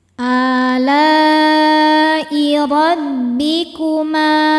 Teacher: Mad thabi'inya alif didahului fathah, hamzahnya i pada kata ala i. Maka lamnya panjang boleh empat boleh lima harakat. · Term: mad wajib muttasil